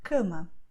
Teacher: So all vowels before M and N are nasal.